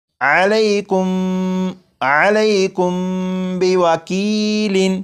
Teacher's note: میم ساکن کے بعد یہاں پر با ہے، جب میم ساکن کے بعد با آ جائے تو میم ساکن میں غنہ کر کے پڑھیں گے، جیسے یہ لفظ لکھا ہوا ہے علیکم، لیکن یہاں پر میم ساکن کے بعد با ہے تو اس میم ساکن میں غنہ کر کے پڑھیں گے اور یہ پڑھا جائے گا علیکم بوکیل۔